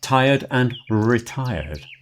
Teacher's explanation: You don't hear the R in there at all. It's more of a diphthong sound in the middle.